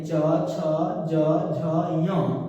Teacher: ह्रस्व ई दीर्घ ई, चु से चवर्ग, इसके बाद य और तालव्य श का उच्चारण स्थान तालु है